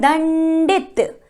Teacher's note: दंडित बोलते समय हमें न की ध्वनि सुनाई दे रही है।